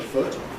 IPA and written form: fʊt (foot)